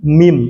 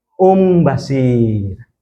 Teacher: seolah-olah nun mati ini kita baca dengan mim bukan sama nun. Bukan min tapi mim.